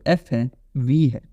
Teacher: यूज हो रहा है अपर टीथ यूज हो रहा है देखो लोअर लिप आपका एक्टिव आर्टिकुलेटर अपर फ्रंट टीथ जो है that is your passive articulator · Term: लेबियो डेंटल